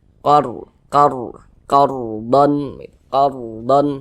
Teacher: dah cuman di sini yang kita temui adalah tanda baca fathah maka huruf rnya ini dibaca tebal dibaca tafkhim sehingga pangkal lisan kita itu naik terangkat ke atas ketika Kita mengucapkannya